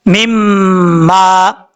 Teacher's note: यहाँ पर गुन्ना करेंगे एक अलिफ की मिकदार, और एक अलिफ की मिकदार लंबा भी करेंगे क्योंकि मीम के आगे अलिफ है और मीम के ऊपर शद होने की वजह से गुन्ना करेंगे।